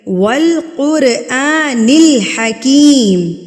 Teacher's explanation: واو کو آپ نے بالکل ہونٹوں کی گلائی سے ادا کرنا ہے، نہ کہ آپ نے اوپر والے دانتوں کو جو ہے نیچے والے ہونٹ کے اوپر رکھ کے ادا کرنا ہے، یہ غلط طریقہ کار ہوتا ہے۔